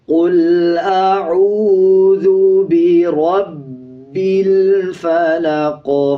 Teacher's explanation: آخر میں قاف ہے، جب وقف کریں گے قاف کا زیر سائلنٹ ہو جائے گا، قاف پہ قلقلہ کیا جائے گا اور یہ موٹا قاف ہے